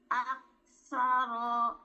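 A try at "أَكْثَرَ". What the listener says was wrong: Tidak ditekan di belakang. Aktsaro. Ro belakang nggak ditekan, Bun.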